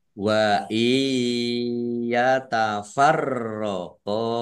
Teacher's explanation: nun sukun bertemu dengan huruf ya bacaan idgham bi gunnah masuk dengan mendengung